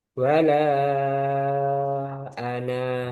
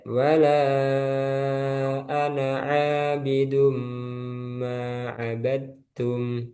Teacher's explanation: ketika dia waqaf dia panjang. Wala ana panjang. Tapi ketika wasal jadi pendek.